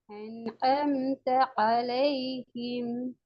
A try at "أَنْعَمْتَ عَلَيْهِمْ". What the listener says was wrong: பின்னாடி சரி வந்துட்டு இப்ப முன்னுதான் பிரச்சனை. இந்த ஆயின் வந்துட்டு இந்த ஆயின் வரணும். இப்ப أنعمت عليهم ஜாயின் பண்ணி வரணுமா?